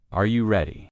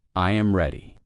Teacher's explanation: The pitch of their voice goes up at the end.